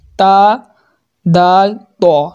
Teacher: ज़ुबान की नोक और ऊपर के दांतों की जड़ से अदा होता है। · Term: हुरूफ नितइया